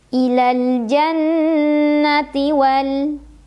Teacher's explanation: Nunnya gunnah musyaddadah karena nun bertasydid. Cara membacanya didengungkan, ditahan kurang lebih 2 harokat.